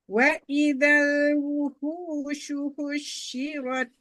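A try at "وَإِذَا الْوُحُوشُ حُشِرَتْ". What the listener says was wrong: Enggak, tasdid shinnya ya Mandeh. Wa idzal wuhushu husyirat. Enggak ada kush husyirat. Enggak ada tasdid shinnya Mandeh.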